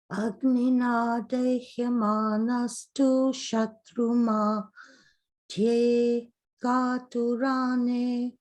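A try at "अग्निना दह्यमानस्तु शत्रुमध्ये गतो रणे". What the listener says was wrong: So in that manastu, don't pause. Otherwise it goes dirgha.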